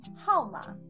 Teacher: her plus o is how in the fourth tone